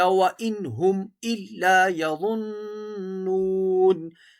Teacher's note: وَإِن پر غنہ نہیں ہوگا کیونکہ نون ساکن کے بعد ہا ہے ، نون ساکن کے بعد ہا ہے، یہاں غنہ نہیں ہوگا۔